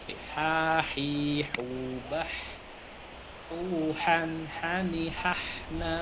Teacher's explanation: H itu agak apa? Bening ya, H itu bening ya, H tidak ada ngoroknya. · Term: huruf H